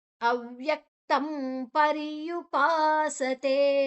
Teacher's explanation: ಅನುಸ್ವಾರದ ಉಚ್ಚಾರಣೆ ಮ ಯಾಕೆ ಅಂದ್ರೆ ಮುಂದಿನ ಅಕ್ಷರ ಪ ಇದೆ ಪ ಬಮಮ ಪ ವರ್ಗದ ಅನುನಾಸಿಕ ಮ ದ ಅರ್ಧವನ್ನ ತಕೊಳ್ತೇವೆ ಅವ್ಯಕ್ತಂ ತಂಪ